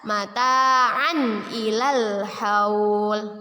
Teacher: Tanwin bertemu dengan huruf hamzah dalam bentuk alif. Kita baca jelas. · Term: izhar